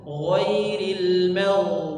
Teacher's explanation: bukan giril magdu atau ghairil magdu tidak diqolqolahkan tapi dia mengalir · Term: huruf gho